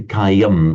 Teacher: in Sanskrit on its own it would be cayum distinctly with an m sound. Um but with the um the following s it would tend to become a nasalized sound of cayang even in Sanskrit.